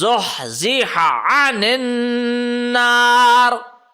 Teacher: You are not allowed to stretch the ha. It is only a zabar on it.